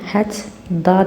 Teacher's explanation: Hət ta sözü hət da deyə tələffüz olunacaq. Qoşa tlardan ikincisi d-ya çevriləcək.